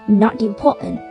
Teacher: T đứng giữa hai nguyên âm nên chính vì thế T đọc thành D